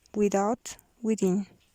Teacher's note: Voiced lenis dental fricative.